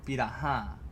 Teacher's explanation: So piraha is a beautiful example of that. Because that H causes nasality in the following A.